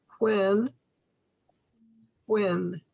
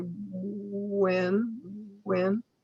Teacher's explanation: And then think about W-H-E-N, when, when. The WH is sort of like just a soft blowing sound, where the W sound sounds almost like ooh, ooh